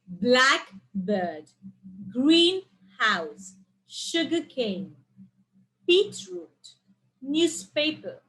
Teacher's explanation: the stress on the first part in the compound nouns